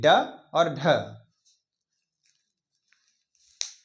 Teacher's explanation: पहले आपकी इसमें जबान आपकी ऊपर जाएगी और फिर उसके बाद एकदम से झटके के साथ नीचे आएगी। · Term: उपक्षिप्त व्यंजन